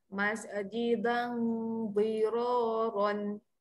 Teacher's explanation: untuk huruf dot tepi lidah ketika dengung, do tu kena naikkan sedikit.